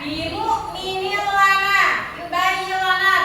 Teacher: Ada bimu minil lana, ada kasrotain bertemu lam. Maka bacanya idgham bila guna dimasukkan tanpa mendengung. Ya, jadi seolah-olah ada tasydidnya ya.